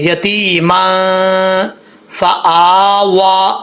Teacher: यतीमा, यहाँ पे गुन्ना करेंगे, मीम के ऊपर जो 2 ज़बर है ना, इसके ऊपर गुन्ना करेंगे। यतीमा फआवा, एक अलिफ की मिकदार हमज़ा को भी खींचेंगे, वाव को भी खींचेंगे।